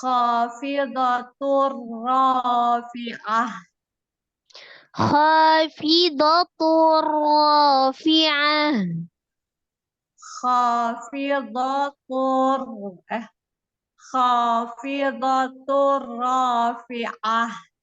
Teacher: Dengan tidak berdengung. Tanwin ketemu dengan ro-nya idgham bila gunna, ditasdidkan ke huruf ro tapi tidak disertai dengan dengung. Terus itu ro-nya takhim.